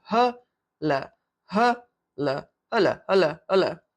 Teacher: It should be hulle, hulle, hulle. But inevitably when you speak, you don't really pronounce a double L. It's just a single L.